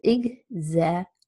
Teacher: exaggerate four syllables and primary stress is on the second syllable